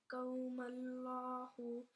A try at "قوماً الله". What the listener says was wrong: قوم الله नहीं قوما الله।